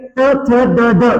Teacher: ड ड यांना म्हणतात दंत फक्त दंत मात्र लक्षात ठेवा कारण जीभ दाताला चिकटते म्हणून त्याला दंत वर्ण म्हणतात